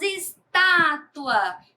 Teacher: Temos estátua, que o tá é pronunciado com mais intensidade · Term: sílaba tônica